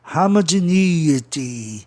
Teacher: Para você escutar a palavra de forma proparoxítona, é necessário que o E tenha um som I bem forte.